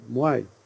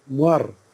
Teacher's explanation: As you come south, the diphthong takes over and the R is lost. · So the diphthong suffers at the expense. I mean, R comes in at the expense of the diphthongal sound.